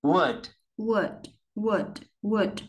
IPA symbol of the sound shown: ʊ